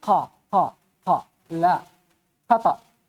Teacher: Kalau qaf enggak boleh kita sebut qaf dengan desis.